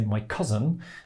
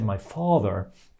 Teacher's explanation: the phrase my cousin is much much shorter in total than the phrase my father